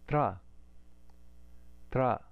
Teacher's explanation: if we put ta and ra together, the dental hard sound and the semi-vowel ra, we get tra